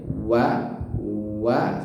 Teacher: waw itu di huruf bibir ya. Wa seperti itu. Dan wa ini sifatnya tipis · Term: huruf waw